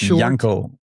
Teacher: It's Yanko, like with a J pronounced in a German way. and a fairly short a. And uh the pronunciation or the emphasis is on on the first syllable.